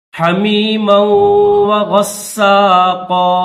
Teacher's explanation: اس میم کو واو کے ساتھ ملا کر غنہ کریں گے